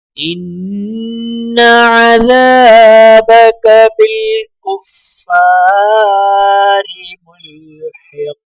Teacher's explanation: نون مشدد ہے، نون کے اوپر غنہ کیا جائے گا